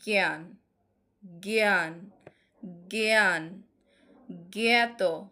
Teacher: যখন আ এটার সঙ্গে যুক্ত থাকে তখন এ এর মত উচ্চারিত হয়